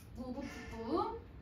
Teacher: 미음, 비읍, 피읍, 쌍비읍이 왔는데 으가 왔잖아요. 얘를 다 우로 발음하세요. 자, 여러분 그래서 무, 부, 푸, 뿌로 읽으시면 돼요. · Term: 원순모음화